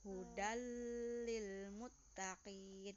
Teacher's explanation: Contoh hudal lil muttaqin, jangan didengungkan. Bacanya juga jangan hudan, tapi menjadi huruf lam. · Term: idgham bila guna